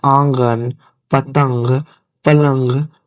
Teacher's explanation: नूने गुना उसकी आवाज नाक से निकलती है